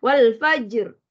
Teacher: Jadinya di sini ra menjadi tebal kerana baris fathah pada huruf fa tu ya. Wal fajr bila waqaf di situ sebenarnya sifat ra automatik bertukar menjadi tebal ataupun istilahnya tafkhim.